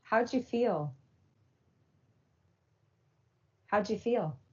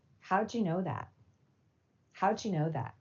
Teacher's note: a final d sound in a word and an initial y sound in the following word fuse to a j sound due to a feature of connected speech called coalescence